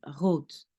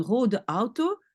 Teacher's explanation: un R donc qui est, on va dire, guttural dans la gorge. Donc, on va dire, en fait, comme en français, mais beaucoup plus léger.